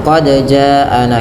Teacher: Panjangkan bunyi huruf ja sepanjang empat atau lima harakat. Karena pada lafal jaana ada bacaan mad wajib muttasir yang terjadi ketika mad thabi'i bertemu dengan hamzah. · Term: mad wajib muttasil